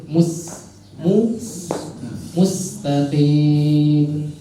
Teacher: Sin itu sifatnya balik lagi dia adalah tipis jadi simpelnya senyum